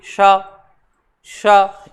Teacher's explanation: श्वास वायु हमारे मुख में थोड़ी सी घूम जाती है और उच्चारण के साथ में हल्की सी सीटी कैसी ध्वनि उत्पन्न होती है